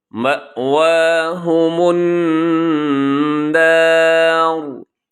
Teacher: اور آخر میں را جو ہے یہ را وقف کی وجہ سے ساکن ہوگا، اور ساکن ہوگا تو اس سے پہلے زبر ہے تو اس را کو اپنے موٹا پڑھنا ہے، اسے باریک نہیں پڑھنا۔